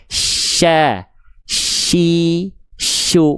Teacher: Dan sifat tafasyi ini cuman ee dimiliki oleh huruf syin saja. Maka ketika kita lafalkan bibirnya santai aja. Tengah lidahnya dinaikin.